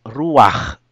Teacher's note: you pronounce first the vowel A before the consonant, if it is chet or ayin, and it is not accented. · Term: furtive patach